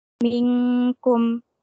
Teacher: Nun sukun bertemu dengan huruf kaf, hukumnya ikhfa atau disamarkan.